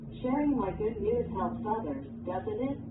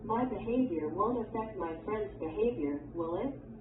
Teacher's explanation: When the speaker is not sure about the statement and wants confirmation from the listener, the intonation of the tag question rises.